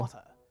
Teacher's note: Now, in American English, we often pronounce the T in words like lighter and water as D's, but transatlantic speakers will hit that T like it stole something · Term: clipped, sharp T's